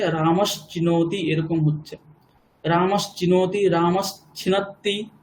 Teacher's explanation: দন্তস্যের পরে চ বর্গ আছে, তাহলেও কি হচ্ছে, দন্তস্যটা তালব্যস্য হয়ে যাচ্ছে